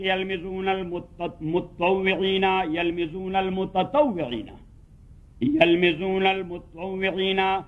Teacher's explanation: شد ہے، تو پھر یہ باب تفاعل سے ہے متطوعین۔ پھر اصل لفظ جو ہے متطوعین، تا کے اندر مدغم ہو گیا قرب مخرج کی وجہ سے